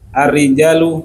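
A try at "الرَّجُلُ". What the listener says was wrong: Kok ar-rijalu qawwamuna 'ala nisa gimana? Kok rijal? Kalau rijal itu panjang, rijalun. Ini kan pendek semua.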